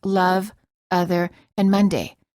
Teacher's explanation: it's the neutral sound uh as in love other and Monday which non-native speakers frequently mispronounce as love other and Mand the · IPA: /ə/